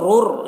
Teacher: रा को रा से मिलाकर पढ़ेंगे, हुरूफ इदगाम ताम हो रहा है और दोनों रा को पुर पढ़ना है